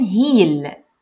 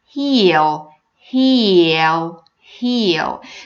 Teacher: not saying he'll it's not he'll it's heel heel heel so you feel that there is a kind of Y sound or yeah sound before the L sound